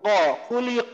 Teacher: এছাড়া এই যে খুলিক কফকে আমরা পড়ছি, কফকে কফ জবর কা পড়বো না, কফ জবর ক পড়বো